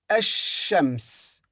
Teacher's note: in the word ashams, the lam is silent